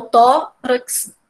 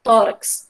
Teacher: a gente entende, né, que o tó é o mais forte do que o rax